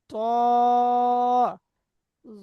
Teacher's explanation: জিভের আগা সামনের উপরে 2 দাঁতের গোড়ার সাথে লেগে